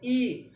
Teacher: अब इसमें देखिए जिह्वा का आगे का भाग उठता है ना, तो ई अग्रस्वर होगा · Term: अग्रसर